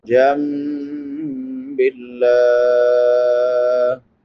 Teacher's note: لفظ اللہ باریک ہے کیونکہ لفظ اللہ سے پہلے زیر ہے، جب لفظ اللہ سے پہلے زیر آئے تو وہ باریک ہوتا ہے، جب زبر ہو پیش ہو تو پر پڑا جاتا ہے۔